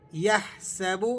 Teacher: ہا کو آپ نے حلق سے ادا کرنا ہے، حروف حلقی ہے، اور با کو کھینچنا نہیں ہے، با کی پیش ہے، تو حرکات کھینچی نہیں جاتی، ہم حرکات کو کھینچ کر نہیں پڑھتے ہیں۔